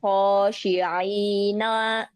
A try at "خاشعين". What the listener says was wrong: Nunnya nggak panjang ya. Khasyi'in.